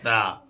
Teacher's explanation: سامنے والے دانتوں کی جڑ سے ادا ہوتا ہے تا تا سرا زبان کا سرا اور دانت کا سرا یہ دونوں مل کر تا ادا ہوتا ہے